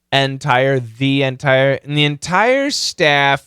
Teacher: the N can kill the D of course and it can kill the th